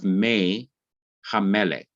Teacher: So what has to change is the vowel under the mem. The short I has to be changed to the long E sound.